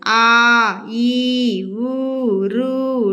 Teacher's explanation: రెండు మాత్రల కాలంలో ఉచ్చరించిన అక్షరాలు ఉన్నాయి చూడండి అచ్చుల్లో వాటిని దీర్ఘాలు అంటారు